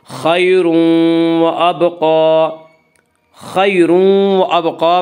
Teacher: یالین کو نرم آواز کے ساتھ جلدی پڑھیں گے۔ خیر و ابقا، خیر و ابقا میں ادغام بالغنہ ہوگا۔